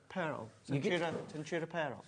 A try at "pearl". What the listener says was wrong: No, you give it 2 syllables, which I love. Pearl.